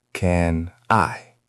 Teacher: Can ends in N. I is a vowel sound, so it becomes can I.